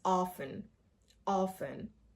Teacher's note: the T is silent here, so the pronunciation is often, often. Whatever your accent is, pronounce it in the same accent with the same pronunciation, just without the T.